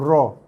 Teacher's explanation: Kawasan kat gusi tu atas sikit itu ra. Okey, hujung lidah sentuh kawasan atas gusi ataupun dipanggil langit depan kawasan gusi tu huruf ra.